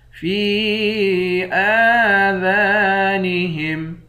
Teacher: فی آذانہم، فا کے بعد یا ہے، اس یا پر مد ہے، اس مد کو تین الف کی مقدار کھینچتے ہیں۔ حمزہ پر کھڑا زبر ہے، ایک الف کی مقدار کھینچتے ہیں۔